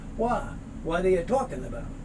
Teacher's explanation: the t sound winds up being that sort of d so it would sound like what are you talking about and